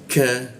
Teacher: Ka masuk ke ka di siku tenggorokan lidahnya kita turunkan. K ada hembusan udara jadinya ka.